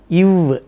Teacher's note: மேல் பல்லும் இதழும் ஒட்டி வரக்கூடியது இவ் என்று சொல்லக்கூடிய வகரம்